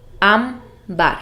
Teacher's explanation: La palabra ámbar es también una palabra grave y tiene el acento en la sílaba am